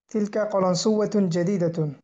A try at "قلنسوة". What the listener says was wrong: কলান সুওয়াতুন, না কলান সুয়াতুন, তাসদিদ নেই এখানে।